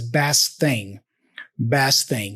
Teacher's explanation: he doesn't pronounce the T for best actually he kind of morphs that into the T for thing